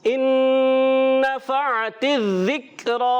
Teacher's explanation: نون ساکن کے بعد دوسرا نون آ گیا، ادغام مع الغنہ کا قاعدہ ہو گیا۔ ایک الف کا غنہ ادا کریں گے۔